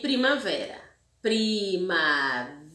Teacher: O vé é a sílaba tônica, que é a mais forte